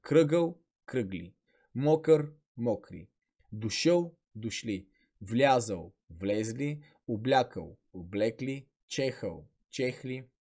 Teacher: този звук ъ изпада във формата за множествено число